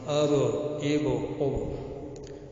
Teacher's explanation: تو اس میں جب ہم ملائیں گے با سے تو با میں ایک آواز واپس لوٹے گی، اسے قلقلہ کہتے ہیں. ریبانڈنگ ہوگی.